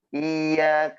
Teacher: യന് ശ്രദ്ധ ഉണ്ട്. നമ്മുടെ നാവിന്റെ മധ്യവും അതിന്റെ മേലെണ്ണാക്കും ചേർന്നിട്ടാണ് യ വരുന്നത്.